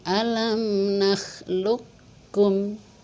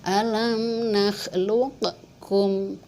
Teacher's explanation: di kapnya bertasydid, qafnya dimasukin ke huruf kaf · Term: idgham mutaqaribain